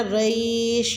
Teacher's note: قریش میں قاف کا مخرج آپ نے پر یعنی کہ موٹا ادا کرنا ہے، اور ریش میں آپ نے تھوڑا سا اس کو لانگ لے کے جانا ہے، ریش یعنی کہ یہاں پہ یائے لین ہوگا۔